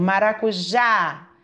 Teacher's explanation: acentuada eu posso perceber também o som que sai por exemplo maracujá o já eu falei mais forte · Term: a sílaba acentuada